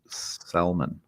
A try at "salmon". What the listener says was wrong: Did you just pronounce the L in salmon? It sounded, man. I was like, salmon, really?